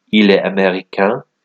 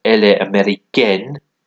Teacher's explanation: You pronounce the N a bit more if it's got an E at the end.